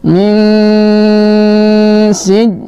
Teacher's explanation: Hijaratin min, nun sukun bertemu dengan sin, seperti ya, pelajaran kita yang sebelumnya, nun sukun bertemu dengan salah satu huruf ikhfa, maka kita baca samar dan sambil berdengung.